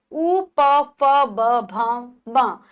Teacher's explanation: उ, प, फ, ब, भ, म ये होठ यानी कि इनको बोलते हुए हमारे जो होठों हैं उनमें परिवर्तन आता है। होठ आपस में मिलते हैं तो इनको ओष्ठय कहा जाता है।